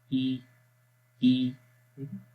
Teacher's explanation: گلے کے سب سے نیچے والے حصے سے آواز آ رہی ہے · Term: حمزہ کی آواز